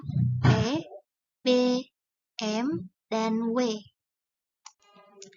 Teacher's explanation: daerah artikulasi dibagi menjadi 8 yang pertama ada konsonan bilabial yaitu konsonan yang dihasilkan dengan mempertemukan kedua belah bibir yang bersama-sama bertindak sebagai artikulator dan titik artikulasi